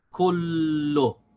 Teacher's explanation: we have to pronounce the vowel on the lam, which is dhamma. So we say lo. So we have to say kul to connect the lam with the kaf.